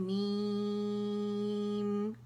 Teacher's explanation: یہ حرف مدہ میم کی آواز کو کھینچے گی 6 کاؤنٹ تک, می. ٹھیک ہے, می کر کے 6 کاؤنٹ تک سے کھینچیں گے اور پھر میم ادا کریں گے, میم.